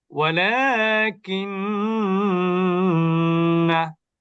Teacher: না টান হবে না, হরকতের উচ্চারণ দ্রুত করতে হবে, মাদ করা যাবে না। ওয়ালাকিন্না, অর্থাৎ নাতে দেরি করা যাবে না, দ্রুত শেষ করতে হবে।